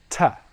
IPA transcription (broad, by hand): t